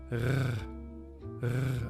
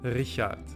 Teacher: kind of rolling in the back of the mouth